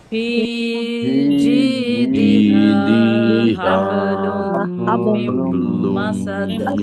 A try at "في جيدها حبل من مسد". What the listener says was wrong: মাসাদ অনেকে সাদ লম্বা করতে, লম্বা হবে না, মাসাদ। ফি জিদিহা হাবলুম মিম মাসাদ। এখন এই দুই জায়গায় কি কি গুণনা বলবেন? এইখানে কি গুণনা, এইখানে কি গুণনা? ঈদগামের গুণনা। হ্যাঁ, ঈদগামের গুণনা এখানে।